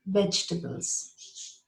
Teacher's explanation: because it starts with a V, you bite your lower lip when you say it.